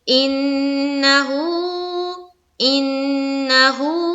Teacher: نون کی آواز کو ناک میں تھوڑی دیر روکنی ہے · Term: غنہ